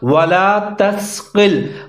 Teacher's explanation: قاف کو موٹا کر کے پڑھنا ہے اور سین کو ظاہر کر کے پڑھنا ہے، سیٹی بجانی ہے۔